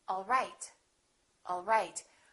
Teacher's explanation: my pitch goes down at the end for a statement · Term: falling intonation